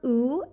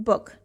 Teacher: the one is long sound ooh as in loop and the other is short o as in book